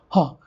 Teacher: Next we have glottal sounds, when the glottis, the vocal folds, are wide apart. Okay, when the vocal folds are wide apart, so when the air passes from you, you get the sound ha. When the doctor says you to open the mouth, you say ha.